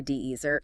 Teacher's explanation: You intend to order a slice of cake, but you stress the first syllable.